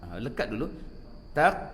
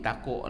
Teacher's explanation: Kalau huruf qaf dalam keadaan sukun, maka kita akan melakukan sifat syiddah dulu, tertahan suara dulu, baru keluar bunyi qalqalah itu